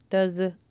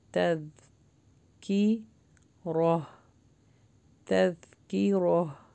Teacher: ذال کے اوپر جزم ہے، اپنی آواز کو روکیے، باؤنس بیک نہیں کیجیے گا. تز نہیں پڑھنا.